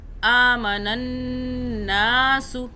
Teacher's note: نا ایک الف کے برابر کھینچا اس نون کو